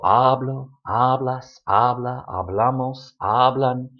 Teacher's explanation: it's not the last but the next to the last syllable that is stressed